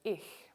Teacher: german also has a voiceless palatal fricative also spelled with ch in german